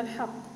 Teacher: القاف. مضمون، مرتبته وسطى، والسبب أنه مضمون